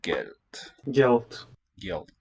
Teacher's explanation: With a nice dark L there.